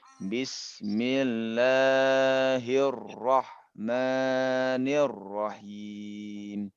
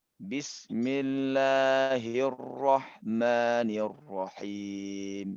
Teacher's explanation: Bismillahirrahmanirrahim. Nah, di sini harusnya lam itu dibaca 2 harokat, ini udah melebihi ya.